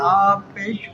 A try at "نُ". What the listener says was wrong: نہیں ہاں نون پیش ابھی پہلے اس کو تو پڑھو، غنہ کے ساتھ تو پڑھو.